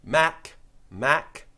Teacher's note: it's touching in the same place as the G but without the vibration